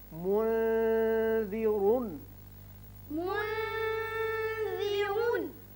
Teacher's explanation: اب ذال باریک پڑا جاتا ہے